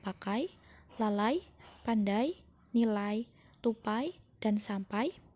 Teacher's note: Menurut Subardi, bahasa Indonesia mempunyai 3 jenis diftong, yaitu diftong naik menutup maju AI